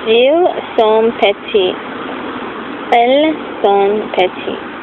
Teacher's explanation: So the final S of plurals is not pronounced.